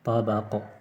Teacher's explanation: آخر میں جھٹکا بھی دیں گے، قلقلہ کریں گے